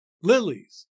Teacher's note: There is a stress on the first syllable, lil, which makes the first foot a trochee, tumta, lilies.